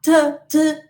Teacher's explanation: ta is voiceless. When you say ta, t, t, there is no vibration of the vocal folds. Okay, and there is aspiration.